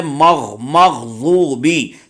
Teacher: سو غین حلق کے اوپر والے حصے سے ادا ہوگا